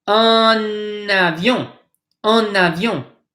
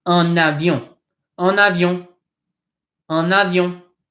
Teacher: You kind of bring this N over and you connect the two words.